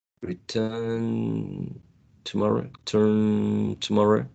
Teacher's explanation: n and T share the same place of articulation · N and t, in terms of voicing, the first one is voiced, right? The second one is voiceless.